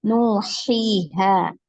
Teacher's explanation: Kemudian ha, ya. Nah, ha di sini fathah bertemu dengan alif. Nah, maka dibaca panjang, ya. Nuhiha, ya, seperti itu.